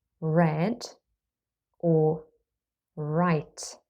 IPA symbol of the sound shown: ɹ